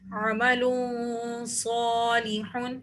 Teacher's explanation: آگے دیکھیے عمل صالح، دو پیش کی تنوین کے بعد صاد آ رہا ہے تو یہاں پر بھی ہمیں اخفا کرنا ہے اور صاد کو موٹا پڑھنا ہے اور ایک الف کے برابر کھینچ کے پڑھنا ہے کیونکہ صاد کے اوپر کھڑا زبر ہے.